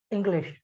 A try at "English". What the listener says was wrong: What I noticed right now, when you said English before, you missed out the sh sound.